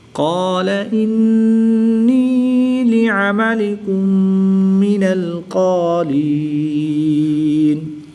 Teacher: میم ساکن کے بعد دوسری میم ہے تو یہاں پر ادغام شفوی ہوگا، یہاں پر غنہ زمانی کر کے پڑھیں گے